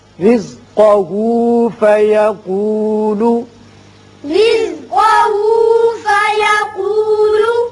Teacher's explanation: را باریک ہوگا اس لیے کہ نیچے زیر ہے، جب بھی زیر آئے را کو باریک پڑھتے ہیں